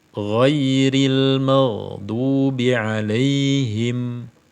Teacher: Nah, ghairil maghdu itu kan ada getaran pada pangkal lidah, dan ini tidak boleh. Menyebutkan huruf ghain, pangkal lidah tidak boleh bergetar sehingga bacaannya terkesan keruh ya.